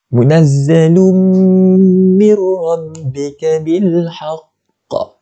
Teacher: Bila kita jumpa dengan huruf mim, tanwin bertemu dengan huruf mim, akan jadi apa? Hukum dia idgham bi gunnah. Cara bacaan dia 2 harakat dengungnya.